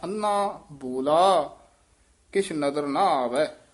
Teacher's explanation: ਅੰਨਾ ਇਹ ਥੋੜਾ ਜਿਹਾ ਹਲੰਤ ਲਾ ਕੇ ਭਾਰਾ ਹੀ ਬੋਲਣਾ